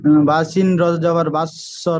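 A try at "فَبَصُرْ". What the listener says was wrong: বাসিন র নয়, বাসিন যাবার বাস।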